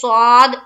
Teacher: صاد کو منہ بھر کر کہیں گے